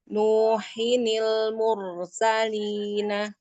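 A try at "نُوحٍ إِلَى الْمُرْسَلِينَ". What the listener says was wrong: rnya tebal lagi kayak tadi awal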